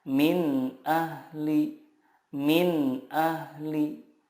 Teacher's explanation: huruf-huruf idhar di sini makhrajnya adalah dari tenggorokan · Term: idhar halki